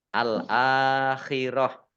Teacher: tak marbutoh karena waakaf atau berhenti maka dibacanya ha sukun